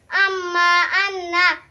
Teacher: 17 নম্বর মখরাজ জিহ্বা নাকের বাঁশি হইতে গুন্না উচ্চারিত হয়